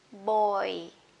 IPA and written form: bɔɪ (boy)